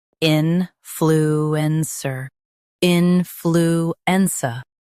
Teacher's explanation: in flu en cer influencer in flu en cer influencer Stress in and keep cer soft.